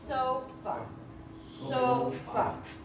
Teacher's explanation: And we use our hand because it's more of a timing thing. It's not so much loud as it is timing. I say it longer. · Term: stress